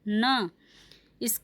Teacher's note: इसका उच्चारण स्थान है दंत और नासिका